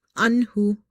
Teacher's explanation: ain is from the middle of your throat because this is from the khalqiya letters, throat letters.